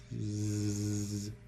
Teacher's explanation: So, alveolar fricative. Put your tongue in the alveolar position. Let the air friction by and voice. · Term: voiced alveolar fricative